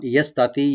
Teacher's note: ইয়াটাকে open করে সিনটাকে আমরা পাতলা রাইট দিব। এখানে তা এবং তোয়া দুইটা আছে, খেয়াল রাখবেন।